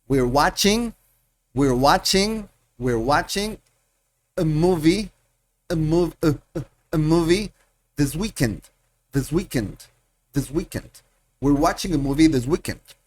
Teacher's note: Se pierden acentos, se conectan palabras y da la impresión de que voy rápido.